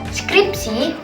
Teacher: Ketiga konsonan tersebut diucapkan secara berurutan dalam satu suku kata tanpa diselingi vokal. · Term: klaster 3 konsonan